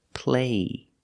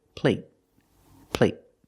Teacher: But the stop T at the end makes the long A a little shorter.